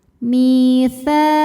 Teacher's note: Akhadna mi dihukumi dengan mad tabi'i dhahiri. Sebab ada ya sukun yang sebelumnya berbaris kasrah, maka huruf mim kita panjangkan 2 harokat.